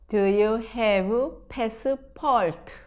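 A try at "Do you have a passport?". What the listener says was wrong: 좋습니다. 이게 패스 잘 안 돼요 처음에.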